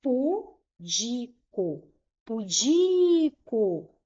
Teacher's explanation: O di é a sílaba mais forte, é a sílaba tônica. Então, é uma palavra paroxítona, ok?